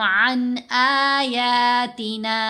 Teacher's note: اظہار میں نون کی آواز کو ظاہر بھی کیا جائے گا اور جلدی بھی پڑھا جائے گا